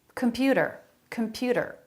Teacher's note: a flap instead of a t sound